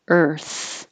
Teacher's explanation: it does take time to go from your tongue being curled back for the r to being further forward and out for the th